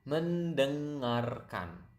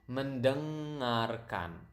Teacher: And then we have listen, which is quite long, mendengarkan. You can hear the nasal sound there, deng, kind of sound like French.